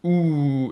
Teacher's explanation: And then ooh is all the way at the lip. It's not even in the mouth anymore where you make that vowel.